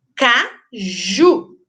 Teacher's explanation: Olha lá mais forte é a última sílaba Então ela é oxítona